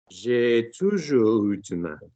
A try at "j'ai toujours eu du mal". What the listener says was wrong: Nice.